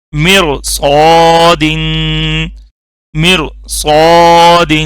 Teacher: اب یہاں دیکھیں سواد آ گیا، ٹھیک ہے. سواد بولڈ حروف میں سے نا، جو موٹے حروف ہیں، حروف مستعلیہ، خا، سواد، ضاد، طا، ظا، غین، قاف، اس میں سواد بھی ہے، اس لیے اب یہ را موٹی ہوگی